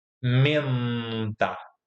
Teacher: Menta, o n ele é realizado nos alvéolos.